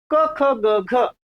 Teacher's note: क ख ग घ याचा कंठातून उच्चार होतो